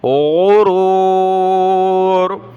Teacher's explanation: غین کو گلے سے نکالنا ہے، موٹا پڑھنا ہے